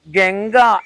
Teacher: ഗംഗ എന്നൊക്കെ പറയുന്ന ഗ എന്ന് ഉച്ചരിക്കുമ്പോൾ മൃദുവായി ഉച്ചരിച്ചാൽ മതി